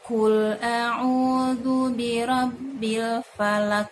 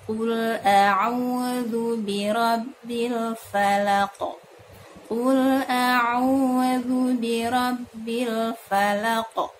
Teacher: huruf qaf sifatnya tidak hamas ya, jangan sampai keluar udara dalam mengeluarkannya. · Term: syiddah